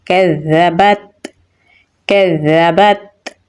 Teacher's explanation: تا میں صفت شدت اور حمز دونوں پائی جاتی ہیں تو اس لیے اسے تھوڑا سختی سے اور سانس جاری رکھ کے پڑھیں گے